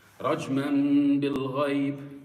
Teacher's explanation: See, the حكم في الإقلاب is the same whether it's a noon or a tanween. You purse your lips and you're converting the tanween or the noon sakina into a meme and you make a ghunna with your nose.